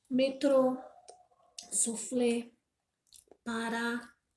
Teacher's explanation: a sílaba tônica é a última sílaba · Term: oxítona